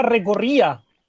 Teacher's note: Entonces, re, co, ri, a. En ri estaría la sílaba tónica.